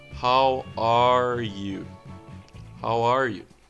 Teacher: Lembrar da entonação que sobe e depois desce.